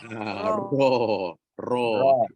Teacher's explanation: hujung lidah dilekukkan ataupun dilengkungkan, tepi je kanan kiri sentuh dan digetarkan. Untuk kita keluarkan huruf Ro.